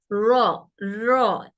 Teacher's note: रॉ का लहजा गूंज सुनाए, रॉ, रॉ एक गूंजदार मतलब हमारी जबान की एक नोक और हमारे दांतों से जो अदा हो रहा है वो रॉ एक गूंज सुनाने वाला लेटर है।